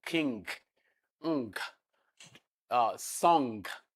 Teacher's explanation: Then the velar nasal, the one you have in king, song, and so on. So that is velar nasal. · It's a nasal sound. The release of air is not from the mouth, from the nose, but the back of the tongue is touching the velum.